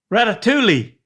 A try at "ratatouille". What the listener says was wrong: That's close. The two L's together, you have to say that.